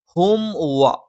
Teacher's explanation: മീമിനെ പൂർത്തിയായി ഉച്ചരിച്ചതിന് ശേഷം മാത്രം വാവ് ഉച്ചരിക്കുക. ഹുംവ എന്ന് പറയുമ്പോൾ അവിടെ മീം പൂർത്തിയാവുന്നില്ല, ഹുംവ.